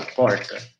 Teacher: O máximo de aproximação que os falantes de língua geral chegavam era essa quase vocalização do r